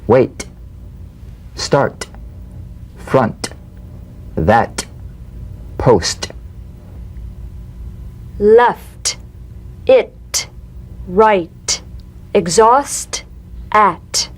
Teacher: the unvoiced T tongue front palatal stop consonant cognate to the D the same staccato springing action as the D drumbeat with no